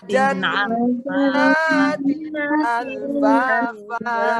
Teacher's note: Jadi wajan 3 harokat dulu, naknya 2 harokat. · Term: gunnah